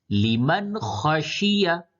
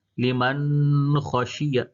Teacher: یعنی کہ نون کی آواز کو ظاہر کر کے پڑھیں گے، ناک میں آواز بالکل نہیں جائے گی۔ لمن خشیہ، غلط طریقہ سنیں، لمن خشیہ، یہ غلط ہو گیا، ناک میں آواز جا رہی ہے، ظاہر کرنا ہے، تو اظہار اسی کو کہتے ہیں کہ تنوین اور نون ساکن کی آواز کو بالکل ظاہر کر کے پڑھنا۔